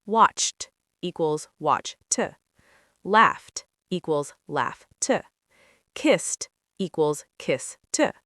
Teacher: Sound 1, t, like T, when the verb ends in an unvoiced sound. P, K, F, S, SH, CH.